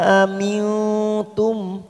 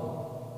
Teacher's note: nun sukun bertemu tak warna hijau, namanya ikfa aqrab. Kita samarkan bunyi nun sukun 3 harokat atau 3 ketuk.